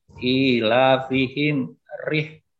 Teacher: Sekarang ra yang dibaca tarkik tipis, yaitu huruf ra berharokat kasrah atau kasrah tanwin